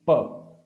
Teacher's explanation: So when we say pa, both of the lips they come together, they contradict. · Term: osthya